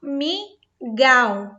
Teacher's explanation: O gal não saiu pelo som nasal, apenas pela boca.